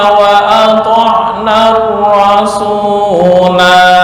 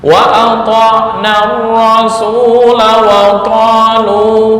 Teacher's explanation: artinya ketika waqaf dibaca panjang, ketika wasal dibaca pendek